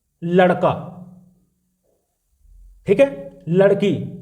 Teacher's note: पहले मूर्धा को टच करती है और धम से नीचे आ जाती है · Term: उत्क्षिप्त वर्ण